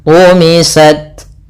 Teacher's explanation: Tak punya 2 sifat, yang pertama yaitu sifat syiddahnya, yang kedua baru hamas. Syiddah itu berarti suaranya tertahan, hamas nafas yang kita alirkan. Tumisat, langkah pertama syiddah dulu, baru ke yang kedua hamas.